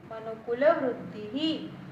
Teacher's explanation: Again here Vruddhi ends with E. So Visarg is pronounced as he.